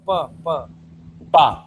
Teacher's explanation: Non-vibrating. Your vocal tract is not vibrating at all.